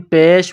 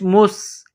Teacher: سین میں سیٹی کی آواز پیدا کرنی ہے